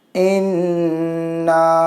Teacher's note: یہاں پر نون کو گنہ کے ساتھ پڑھنا ہے کیونکہ نون میں تشدید ہے